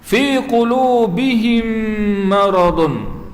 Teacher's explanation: Mim mati bertemu dengan mim. Idgham mithlain, dengung pada makhraj mim 2 harakat.